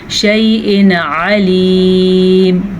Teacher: बग़ैर गुन्ने के, ज़ाहिर करके